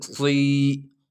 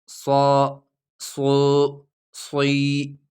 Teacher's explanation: سٹی کی آواز کو تھوڑا موٹا کرنا